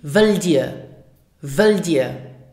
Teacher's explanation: it is very common in spoken Luxembourgish not to pronounce the final T